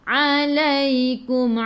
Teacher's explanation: Alaikum daripada kerongkong bukan daripada hidung.